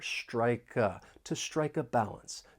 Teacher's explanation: we can link the final consonant sound in strike with the beginning vowel sound in uh and it's almost like we're moving that consonant sound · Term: linking